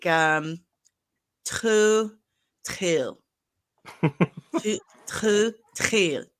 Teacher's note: The H doesn't have like an actual H sound in Klingon. It's a breathy kind of like a grunt or a h. So it'll be like Tlhutlh.